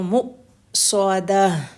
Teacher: میم کو حمزہ، میم کے ساتھ حمزہ ساکن ہے تو مؤصدہ، جب حمزہ ساکن ہوتا ہے تو سٹرونگ جھٹکا آتا ہے ، مؤصدہ، اوپر مشأمہ میں حمزہ ہے لیکن وہ ساکن نہیں